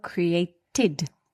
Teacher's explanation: The last sound in the verb create is t, a dental consonant, so created